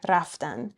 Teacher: in spoken Persian, we drop the d sound at the end and we just say raftan